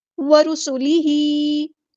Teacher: رو ہمارے یہاں پہ ہیوی لیٹر پورا ادا کریں گے، ہاں کے نیچے کھڑی زیر ہے تو یہاں پہ حرکات مدہ میں سے آئی ہے حرکت، تو ہم اس کو الف کے برابر لمبا کریں گے.